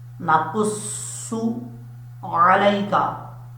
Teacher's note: عین کو پڑھتے وقت حمزے کی آواز نہیں آنی چاہیے